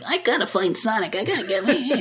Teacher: it sounds too much like that nasally or raspy anime kind of little kid voice where it's like, "I gotta find Sonic, I gotta get me," instead of him just being like a little kid.